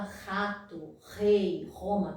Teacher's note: que é o R mais glotal, é um R que fica lá na glote, que é um R mais forte